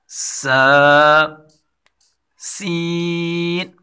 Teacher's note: زا اور سین کو سیٹی کے ساتھ باریک پڑھا جائے گا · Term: سیٹی والے حروف